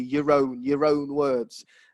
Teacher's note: you do hear the r sound because it's before a vowel